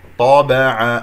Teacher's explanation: الطاء مفخمة مرتبة ثانية